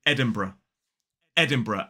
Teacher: quite a few people drop that first schwa and make it a 3-syllable word and say Edinburgh.